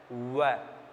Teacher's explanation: व जो व्यंजन वर्ण है इसका उच्चारण दांत और होठ दोनों को मिलाकर के किया जाता है